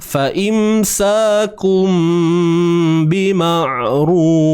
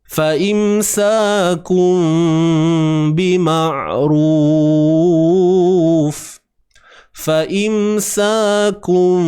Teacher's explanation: Yang pertama, tutup bibir secara sempurna. Fa imsakum bima'ruf. Sempurna. Ada pun cara yang kedua, iaitu dengan disebut ikhfa, secara ikhfa, iaitu menutup bibir secara bersahaja. Tidak sempurna lah. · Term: hukum iqlab